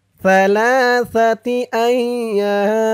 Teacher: ইয়া বলে 3 আলিফ টান দিয়ে এই মিমকে ধরবে, মিমের নিচে 2 জের তানবিন সাকিন হয়ে যাবে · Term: মধ্যে আরজি